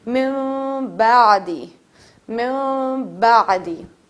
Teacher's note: آپ نون کو بالکل چھوڑ دیں گے اور چھوٹی سی میم ایڈ کر لیں گے, میم ملا لیں گے.